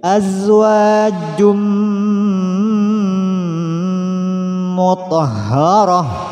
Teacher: Masukkan saja suara nun mati pada mim. Artinya ketika tanwin di sini dilafadzkan, kita sudah posisi lidah, posisi mulut sudah berada di mim. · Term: idgham bi gunnah